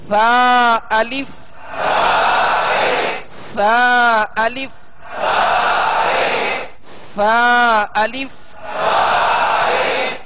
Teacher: ان کا مخرج ہے سرا زبان اوپر کے دو دانتوں کا اندرونی کنارہ